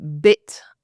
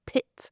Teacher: Put put two fingers on your where your Adam's apple would be and say bit and then compare that to pit and you'll notice that it's vibrating on the on the B and not on the P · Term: voicing